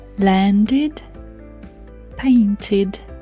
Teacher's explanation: Although d is a voiced sound and t is a voiceless sound, they have their own rule. The ed becomes id.